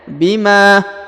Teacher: huruf Ma dipanjangkan dua harakat karena di depannya terdapat Alif